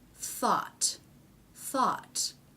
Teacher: we've switched back to an unvoiced th now we have the ah vowel and a final t